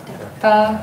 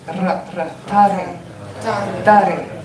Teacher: Now it's not Tare, it's Tare. Make it a dental ta, that's crisp. Ta, and then the R rolls.